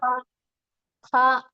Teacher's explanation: നമ്മുടെ തൊണ്ടയുടെ മേൽഭാഗം മേലെ അറ്റത്തു നിന്നാണ് ഹ എന്ന അക്ഷരം ഉച്ചരിക്കേണ്ടത്